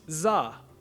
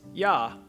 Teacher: in hanoi up north it would be pronounced za while in saigon it would be pronounced ya